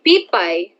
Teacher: Ito ay ang diptonggong ay at ito ay nakikita sa huling pantig ng salita na pay.